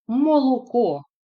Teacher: голосний о вимовляється чітко як у наголошеній, так і у ненаголошеній позиції